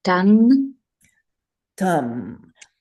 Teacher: It becomes very nasal. You send that sound straight up your nose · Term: Anusvara